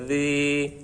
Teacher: জালের উচ্চারণটা নরম হবে, জিহ্বার আগা সামনের উপরে 2 দাঁতের আগার সাথে, জি হালকা লাগিয়ে